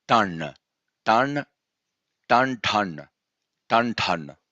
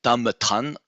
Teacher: So when we have anusvara before t, it is changed into the nasal pair, which is n.